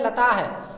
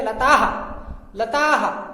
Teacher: आ का ही उच्चारण इसमें लास्ट में निकलेगा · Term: विसर्ग